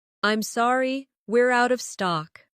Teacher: Stress, out of stock to make it clear.